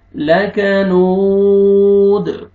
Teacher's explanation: لک، لکنو، واو مدہ، واو جزم سے پہلے پیش ہے، نون کو آپ نے کھینچنا ہے، لاسٹ میں دال وقف کی صورت میں دال ساکن ہو جائے گا تو آپ نے قلقلہ کرنا ہے